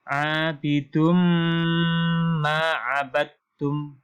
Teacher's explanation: Nah, di sini domatain bertemu dengan mim yang di sini ada tasydidnya. Jadi tanwain domatain bertemu dengan mim. Maka dibaca dengan dengung.